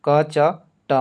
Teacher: क च ट इसको उच्चारण करिएगा तो इसमें आपको झनकार महसूस नहीं होगा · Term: अघोष